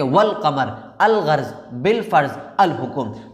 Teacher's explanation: جیسے کہ والقمر، تو یہاں پر قمر سے پہلے الف اور لام استعمال ہوا ہے لیکن یہاں پر جو ہے الف کا تلفظ نہیں ہو رہا ہے، الف یہاں پر سائلنٹ ہے، ڈائریکٹ لام کا تلفظ ہوتا ہے، جیسے کہ والقمر، الغرض، بالفرض، الحکم۔ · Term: حروف قمری